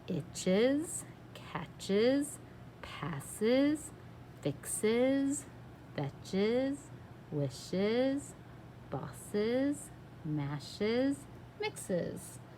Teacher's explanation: our suffix es can sometimes sound like that Z sound in there.